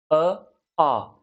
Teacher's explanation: यहाँ अपन देखेंगे कि अ और आ ये आपके कंठ्य वर्ग में आते हैं और इनका उच्चारण स्थान जो है कंठ से है। अ, आ ये इनका उच्चारण जो ध्वनि है वो कंठ से उत्पन्न हो रही है